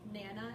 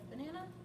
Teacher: unstressed syllable deletion which is when they take away a weak syllable of a word